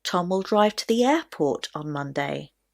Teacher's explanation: if the question is where is Tom going on Monday then the stress will naturally be placed on the word airport